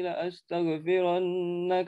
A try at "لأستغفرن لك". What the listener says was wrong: Awas, jangan, hati-hati hurufnya jangan kelewat.